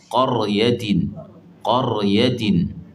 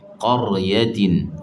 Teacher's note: Dia jadi tebal ni kerana kita lengkungkan sahaja tengah lidah tu. Jangan kita buat sampai ada sifat isti'la.